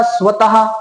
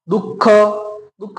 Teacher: ज्या वेळेस आपण या विसर्गाचा उच्चार करतो त्यावेळेस ह या वर्णाला हिसडा दिला जातो, याचाच अर्थ थोडासा झटका दिला जातो बोलता वेळेस.